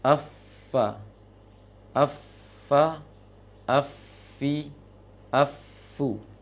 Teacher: ujung gigi seri atas dengan bagian dalam dari bibir bawah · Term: huruf fa